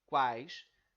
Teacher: quando nós pronunciamos a primeira parte, quais, nós pronunciamos toda ela em uma única emissão. Então, quais, tudo isso é uma sílaba só. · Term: tritongo